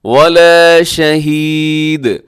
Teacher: شہید کے اوپر آپ نے آخر میں دال ساکن ہوگی وقف کرتے ہوئے تو دال پہ قلقلہ ہوگا